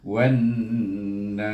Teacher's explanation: kita masukkan huruf waw kepada huruf nun, jadi bunyinya wan-nas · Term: idgham syamsi